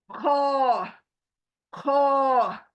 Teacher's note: मुह ऐसे हो जाएगा गोल हो जाएगा मुह आपका और हलक के ऊपर से इसको निकालना है फिर जहां पर खराश होती है ना हमें जो खराश होती · यह हलक के ऊपर से आएगा और इसको मोटा करके पढ़ेंगे क्या करेंगे मोटा करके पढ़ेंगे ख ख और आवाज सुने आप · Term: मोटा लेटर